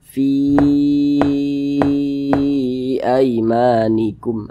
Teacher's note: Nah, maka namanya dia berubah menjadi mad jaiz munfasil, panjangnya boleh 4 harokat, boleh juga 5 harokat.